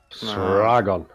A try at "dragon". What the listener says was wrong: Yes, dragon. It's literally dragon with a Z instead of a D. That is not an English pronunciation of dragon, of which I am not.